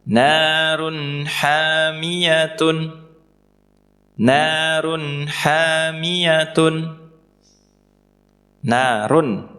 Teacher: Run kita baca jelas karena setelahnya huruf ha. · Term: idhar